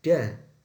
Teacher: Sama seperti ta, terjadi penutupan menggunakan ujung lidah dan bagian gigi atas juga gusi atas. Perbedaan dengan ta sama seperti perbedaan pa dan ba yang ada pada bagian tenggorokan.